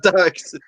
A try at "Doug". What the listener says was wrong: See, you're saying Duck.